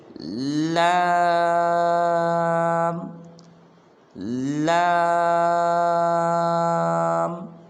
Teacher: اس کے بعد آگے والا حرف ہے وہ ہے لام۔ تو اس لام کا جو مخرج ہے وہ یہ ہے کہ زبان کی نوک کو سامنے والے 4 دانتوں کے مسوڑوں پہ لگانا ہے